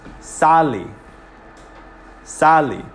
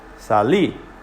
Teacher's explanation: listen to how long i say the a if i accent the a sally sally it's a little longer than the i if i